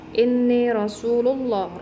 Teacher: karena ada alriif bertemu dengan huruf nun inni Rasulullah rnya ini dihukumi dengan bacaan tafhim atau tebal karena ada huruf ro berharakat fathah Rasulullah ini Allahnya Rasulullah ini dihukumi dengan bacaan tafhim tebal karena · ronya ini dihukumi dengan bacaan tafhim atau tebal karena ada huruf ro berharokat fathah